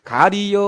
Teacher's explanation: 이와 어가 결합이 되면서 이중모음 여로 축약이 됩니다